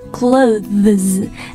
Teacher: 它其实是▁th▁发了一个浊辅音▁z▁然后呢后面的▁es▁是一个▁plural▁form▁所以它就读一个▁z ▁连起来就是▁clothes▁但是呢它在读得特别快的时候就是我们日常交流的时候啊你直接把它发成▁clothes▁就好了Right,▁and▁this▁noun▁is▁always▁plural,▁so▁it▁would▁be▁what▁you▁guys▁call▁uncountable.▁You▁always▁should▁have▁some▁kind▁of▁measure▁in▁front▁of▁it.▁So▁you▁say,▁you▁know,▁an▁article▁of▁clothes.但是呢，和这个类似，其实发音不一样的，非常常